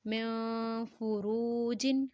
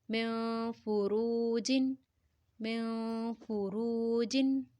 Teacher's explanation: نون ساکنہ کے بعد فا ہے تو غنہ کریں گے یعنی اخفا کا ساؤنڈ کریں گے